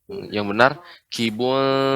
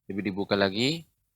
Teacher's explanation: ketika membaca kawakibun tidak boleh lidah lengket ke langit-langit, tapi disamarkan. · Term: ikhfa